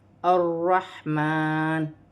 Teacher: مشدد ہمیشہ 2 مرتبہ پڑھا جاتا ہے، ایک اپنے سے پہلے حرف کی حرکت کے ساتھ ملا کر، ایک اپنے حرف کی حرکت کے ساتھ ملا کر، لیکن آگے ہا ساکن ہے تو ہا کو را کے ساتھ ملا کر پڑھا جائے گا۔ میم پر کھڑی زبر ہے، ایک الف کی مقدار کھینچ کر پڑھا جائے گا